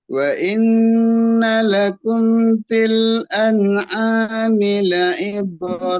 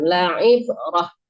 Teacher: mematikan ta marbutah itu nggak boleh dipanjangkan, dimatikan